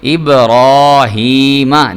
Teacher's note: اب را کھڑا زبر را، اب را، ہا زیر یا ہی، اب را ہی، میم زبر ما، ابراہیم۔ دیکھیں میں نے را کو پر کر کے پڑھا